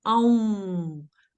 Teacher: you really have to bring your lips together like you do for wow, and you're also using your nasal cavity